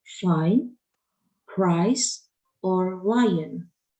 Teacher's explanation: Those words with the long E sound have had it diphthonged into I, as in the words fine, price, or lion.